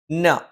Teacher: നാവിൻ്റെ അറ്റം മേലെ മുൻപല്ലിൻ്റെ മോണയിലാണ്